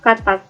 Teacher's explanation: K dengan bunyi hambat dorsovelar tak bersuara